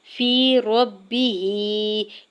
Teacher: میم کے زبر کو بغیر کھینچے ہوئے ادا کرنا ہے۔ فی ربہ، یا ساکن سے پہلے فا کے نیچے زیر ہے یا مدہ ہو رہا ہے، 2 حرکت کھینچ کے ادا کریں گے